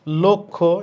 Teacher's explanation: ল এর সাথে যে অ আছে উচ্চারণটা কিসের মত হবে ও এর মত হবে